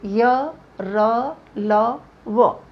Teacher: इनका उच्चारण करते समय जीभ पूरी तरह से मुख के किसी भी भाग को नहीं छूती है। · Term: अंतस्थ